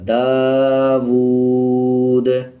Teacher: گا اور اس کے اوپر جزم ایڈ ہو جائے گا، تو وقف کرتے ہوئے دال پہ قلقلہ بھی کیا جائے گا